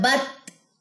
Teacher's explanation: تا میں ہمس ہوتی ہے، بت پڑھا جاتا ہے